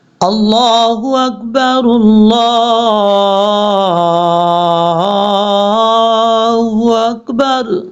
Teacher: یہ را کو لام سے ملائیں گے، رلا پڑھیں گے